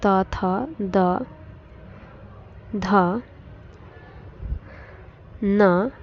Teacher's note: दंत से उच्चारित होने वाली ध्वनियां है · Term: दंती ध्वनियां, दंतीय ध्वनियाँ